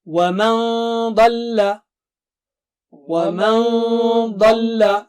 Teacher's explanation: Dad is very thick and high, so Noon Sakina also will be very thick and high.